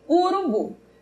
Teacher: temos a vogal u que é apenas fechada como em urubu